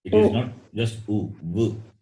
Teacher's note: Vakara is dental plus labial and ukara also labial.